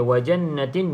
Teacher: Okey, wajannatin, nun yang bersabdu sama seperti mim yang bersabdu, wajibul gunnah, maka cukupkan dengung 2 harakat